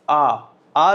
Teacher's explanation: आ जैसे ही आप बोलोगे तो मुंह आपका पूरा खुल जाएगा, तो विवृत, क्योंकि विवृत होता ही आपका ओपन है, ध्यान रखना है।